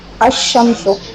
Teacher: لام شین میں ادغام ہو گیا